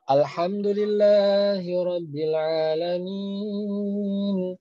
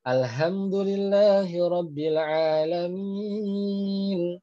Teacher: Berubah nih, harusnya H, ya, H itu ada di tenggorokan tengah. Nyasar ke bawah, Alhamdulillahirabbil alamin.